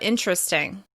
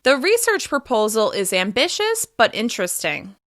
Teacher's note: Because the final word of that sentence is a little bit longer, you can hear me step down in pitch.